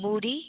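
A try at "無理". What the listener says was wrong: Muri, yeah. No, not D. Muri. Muri. Muri.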